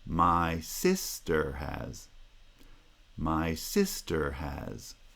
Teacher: The pitch of the voice goes up for sister has.